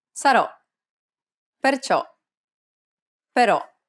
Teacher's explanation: This is an open sound, so be sure to open your mouth and allow the air to pour out. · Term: grave accented O